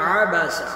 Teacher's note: ثم عبس، عبس عین کو حلق سے ادا کریں گے، سین پر سیٹی کی آواز آئے گی